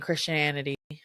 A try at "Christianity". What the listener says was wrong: There you go. You said it right that time.